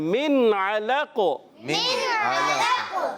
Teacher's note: قاف حرف قلقلہ سے ہے تو قلقلہ واضح ہوگا